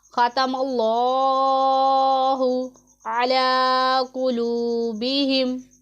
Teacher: लफ्ज़ अल्लाह के लाम से पहले हरफ के ऊपर ज़बर है, इसलिए हम इसमें जलालत लफ्ज़ अल्लाह के लाम को पुर पढ़ेंगे